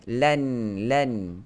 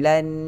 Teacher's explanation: hujung lidah letak pada langit hadapan. Tetapi dia tutup mulut. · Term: nun mati